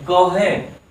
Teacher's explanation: क का भी उच्चारण स्थान क्या है? कंठ है।